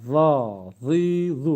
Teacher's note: Yine aynı dı gibi. Üstte dil üste gidiyor ve peltek çıkıyor.